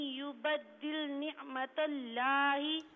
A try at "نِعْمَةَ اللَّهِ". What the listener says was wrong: نہیں، اس میں نعمت اللہ، لفظ اللہ کی لام کو پر پڑھنا ہے. میری بہن لفظ اللہ کو پر پڑھنا ہے. لام کو پر پڑھنا ہے.